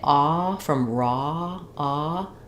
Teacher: I have rounded lips, but I'm almost as open as I was for that ah of cot or father